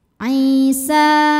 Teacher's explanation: sebab ada Ya Sukun sebelumnya kasrah maka huruf Ain panjang dua harakat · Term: Mad Thobi'i